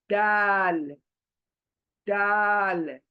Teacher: जबान हमारे ऊपर के दांतों के पीछे जड़ों को टच करेगी, चौड़ी होकर